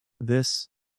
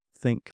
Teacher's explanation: It can be voiced, like in this, or unvoiced, like in think.